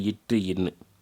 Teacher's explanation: நாவினது நுனி அன்னத்தினது நுனியை தொடுவதனால் தோன்றும் எழுத்துக்கள்